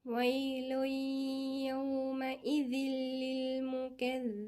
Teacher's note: تنوين بالضم وبعدها الياء إضغام ناقص